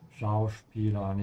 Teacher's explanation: make sure you pronounce the S here like a sh sound because it comes before a P.